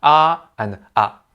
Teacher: Cantonese also sometimes distinguishes between long and short syllables like: aa and a are different.